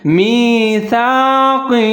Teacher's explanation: آگے ہا کے نیچے کھڑی زیر ہے، اس کو تھوڑا سا لمبا پڑھیں گے